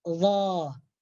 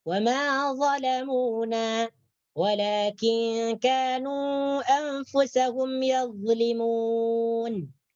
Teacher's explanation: ketika kita membunyikan atau melafadzkan huruf dha, maka hujung lidah kita nih bagian depan sekali menyentuh tepi, menyentuh hujung gigi atas